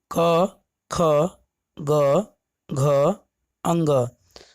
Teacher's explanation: स्पर्श स्थान है कंठ। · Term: कवर्ग